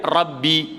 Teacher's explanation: ba yang sukun dengan ba kasrah dia idgham jadi satu, dia buat syaddah, baca dia Rabbi, sebab tu ketat.